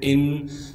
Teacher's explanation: تشدید ہونے کی وجہ سے نون پر غنہ کیا جائے گا۔